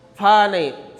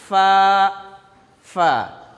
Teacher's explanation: ये फ़ा अदा करने में ख्याल रखना है कि ऊपर के दांत नीचे के होंठ में लगने चाहिए, तो फ़ा निकलेगी, दोनों होंठ से नहीं।